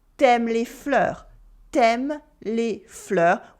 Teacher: In everyday spoken French, we often cut the u when it comes before a vowel.